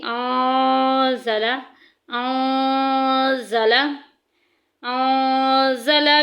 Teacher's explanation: سامنے والے دونوں دانتوں کی جڑ جو ہے اور جہاں سے تالو شروع ہوتا ہے وہاں پہ زبان کی ٹپ لگانی ہے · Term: اخفا